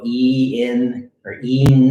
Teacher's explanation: your tongue will be up and back and kind of balled up a little bit and it won't be touching your front teeth but it'll be up high in the roof you won't be